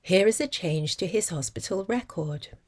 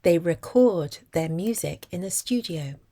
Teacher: the word record carries the stress on the first syllable when it functions as a noun and on the second syllable when it functions as a verb. The vowel is also subtly different.